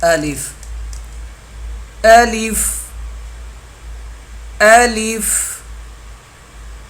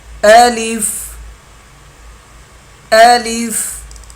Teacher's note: یہ بحالت مدہ منہ کے خالی حصے کی ہوا سے ادا ہوگا۔